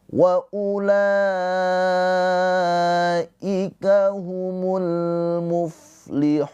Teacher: Mad arid lisukun dibaca panjang. Hunya ini boleh dua, boleh empat, boleh enam harakat.